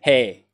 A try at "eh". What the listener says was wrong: Eh. Not hey. Eh. E-H.